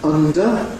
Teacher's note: in ‘under’ [ˈʌndə], the [d] has a ‘nasal approach’